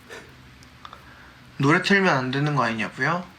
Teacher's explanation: notice that there isn't really any waving going up and down in his sentence instead he drops the intonation a bit so it doesn't sound flat